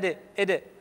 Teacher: بعض الناس يميل القلقلة للكسرة يقول ندى إدى، خطأ.